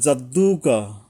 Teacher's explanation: জিমটা কিন্তু জিহ্বার মাঝখান থেকে জিহ্বার মাঝখানে একটা চাপের মত আসবে